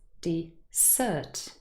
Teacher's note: And in the second word, dessert, the second syllable is stressed.